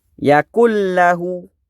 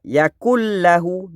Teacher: Nun tu terus masuk ke dalam huruf lam. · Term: idgham bila guna